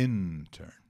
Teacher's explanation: a pronúncia é intern né a sílaba tônica é a primeira